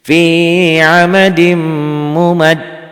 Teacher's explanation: Tasdidnya warnanya coklat, mimnya warna coklat, berarti nyamber dan double ada ditahannya, ada panjangnya 1 alif sampai 1 alif setengah, dan ada juga dengung ke hidungnya karena itu huruf gunnah, idgham bi gunnah.